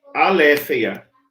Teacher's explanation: o espírito fraco indica ausência de aspiração